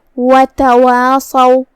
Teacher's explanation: ہم مد الف کو ترقیق سے ادا کرتے ہیں، مطلب ہلکی آواز میں. کیونکہ اس سے پہلے حرف الواو ہے. · صاد حروف تفخیم میں سے ہے, لہذا ہم صاد کو بھاری آواز میں منہ پھلا کے ادا کریں گے. اس پہ زبر ہے, لہذا اس کا دھیان رہے.